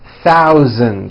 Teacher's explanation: be aware of my pronunciation of numbers, especially the TH and the voiced Z sound, Z, in the word thousand.